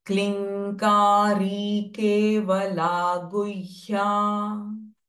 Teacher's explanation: So the anuswara m sound will change it to ng, nasalized ng.